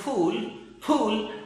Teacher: देखिए, हम बोलते हैं एस्पाइरेटेड साउंड में हम क्या करते हैं, जो जैसे हम कहें POOL पूल बोलते हो ना, आप हिंदी में तो बोलते हो पूल, लेकिन जब अंग्रेज बोलेंगे फूल, दिस इज अ फूल, फूल, अब पै के साथ है की आवाज आ रही है, फूल, पै को फै बोल रहे हैं, वो कै को जैसे खाट, अब कॉट नहीं बोल रहे हैं, वो खाट बोल रहे हैं, यानी है की आवाज को साथ में बोल रहे हैं।